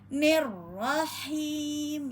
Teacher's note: Alif hamzah wasal dengan lam. Kemudian ro bertasdid maka nir masuk lagi ke ro yang bertasdid.